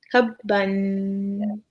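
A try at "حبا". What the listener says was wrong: You see, and I understand why you're reading the Jim because it's like the dots here versus right here. Yeah, but habba.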